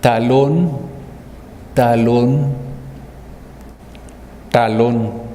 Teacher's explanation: en el primer caso es una t dental central en el segundo caso es una t adelantada y en el tercer caso es una retrasada